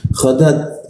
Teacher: huruf ta itu dimatikan, itu ada seperti hembusan sedikit